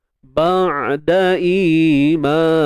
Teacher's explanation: Ba'da imanihim, ba'da huruf ain, ba'da huruf ain matikan ain tu, dan jangan tahan suara dan jangan lepas suara. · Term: tawassut